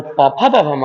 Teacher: और जो प फ ब भ म होता है बच्चे, वो ओष्ठ से।